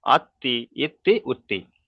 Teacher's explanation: তি আততি তাহলে এইযে তা এর উপর যেহেতু তাজ এসছে সেইজন্য তাটাকে তার আগের অক্ষরের সাথে মিলিয়ে একবার প্রথম উচ্চারণ হয়ে যাচ্ছে আবার তা আরেকবার উচ্চারণ দুবার উচ্চারণ হচ্ছে